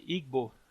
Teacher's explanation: uma coarticulação entre o lábio e lá atrás o véu, né, o véu palatino · é como se você fizesse ao mesmo tempo o som do B e o som do G. As duas coisas estão fechando.